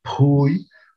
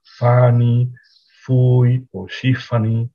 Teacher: en lugar de esa P aspirada, usan una fricativa labiodental